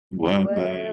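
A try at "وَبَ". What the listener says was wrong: Itu ada idlak. Dia kalau bunyi macam tu, ada idlak lah tu. Kalau tak ada idlak, bunyi dia tertahan. Ah, jadi bunyi dia wa ba, ba. Dia bunyi izlak dulu. Bunyi izlak dulu. Ba. Rap, rapat bibir.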